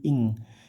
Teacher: Khusus ikhfa-nya qaf dan kaf itu samarnya seperti ng, eng, ing, kayak pelafal singkong gitu ya.